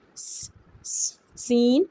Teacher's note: The tip of the tongue comes close to the upper and lower front teeth. Air flows softly between the teeth